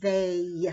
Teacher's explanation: when we say that sound a we also have to add the yeah sound to it even though it's an e it sounds like a but we